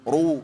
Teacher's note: harusnya pangkal lidahnya dinaikin. Ru lebih tebal